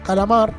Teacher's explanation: En este caso, calamar, mar sería tónico. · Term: sílaba tónica